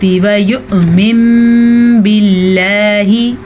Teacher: नून साकिन के बाद हर्फ बा आया है तो नून साकिन मीम में बदल जाएगा। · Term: इकलाब